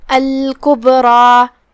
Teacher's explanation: کلمت الکبریٰ یہاں با پہ جزم ہے، با کا حکم ہے قلقلہ، قلقلہ کا معنی ہے حرف ساکن کو ہلانا، لہذا ہم با کو ہلاتے ہوئے یہ کلمہ کو پڑھیں گے، الکبریٰ۔ پھر جو کہ را پہ زبر ہے تو را کا حکم ہے تفخیم، ہم اسے بھاری آواز میں پڑھیں گے، اور اس کے بعد جو کہ مد الف ہے تو ہم اسے تفخیم سے پڑھیں گے، کیونکہ مد الف اپنے پیچھے والے حرف کا حکم لیتا ہے۔